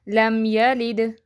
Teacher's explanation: میم ساکن کے بعد میم اور با کے علاوہ کوئی بھی حرف آ جائے تو وہاں اظہار ہوگا، یعنی غنہ نہیں ہوگا، اس کو اظہار شفوی کہتے ہیں، مثلاً لم یلد۔ اب اس میں کوئی غنہ نہیں کر رہے، اظہار مینس اس کو میم ساکن کی آواز کو کلیئر کر کے پڑھ رہے ہیں